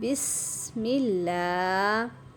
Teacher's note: سین کو ہم نے سیٹی کے آواز سے پڑھا اور زبان کو آپ نے ثنایا اولیاء کی درمیان میں رکھ کر آپ نے سین کی ادائیگی کرنی ہے اور اللہ کی لام باریک کرنی ہے۔